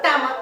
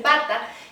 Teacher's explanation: el niño no tiene la capacidad de pronunciar el sonido de la K y siempre lo cambia por el sonido de la T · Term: errores en la producción